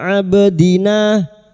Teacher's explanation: ba sukun huruf ba yang mati asli di tengah kalimat qalqalah sugro